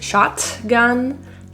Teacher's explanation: The T in shotgun is pronounced as a stop T. It's stopped in the throat rather than released.